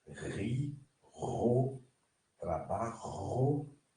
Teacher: Ela é gutural, né? Ela é arranhada também na garganta, né? Você vibra as cordas vocais